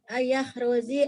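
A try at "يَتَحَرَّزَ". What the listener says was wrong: Ayataharraza. Bu huruf ta itu bukan hamzah.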